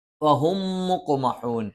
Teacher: ഫ മേലെ മുൻപല്ലിൻ്റെ താഴ്ഭാഗം താഴെ ചുണ്ടിൻ്റെ പള്ളയിൽ. ഹ തൊണ്ടയുടെ താഴ്ഭാഗം.